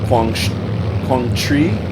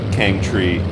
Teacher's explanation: And it's a Quang, and then it's a T sound with an SH sound, which is a little hard to make if you're not used to doing that